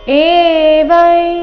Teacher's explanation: ಅನುಸ್ವಾರದ ಉಚ್ಚಾರಣೆ ಇಲ್ಲಿ ಚ ವರ್ಗದ ಅನುನಾಸಿಕ ಞ ರೀತಿ ಬರಬೇಕು